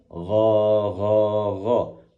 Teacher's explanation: Gh dan pangkal lidah naik ke atas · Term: ghain